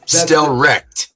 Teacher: just get rid of the ch sound and make it more of a hard Stellrecht